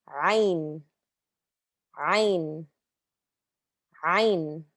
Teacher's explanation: Ayn also comes from the back of your throat, a little near the base of your throat, and you almost feel it like, I don't know, this is probably me going a little crazy, but you kind of feel it like on the muscle of your throat, like Ayn, Ayn.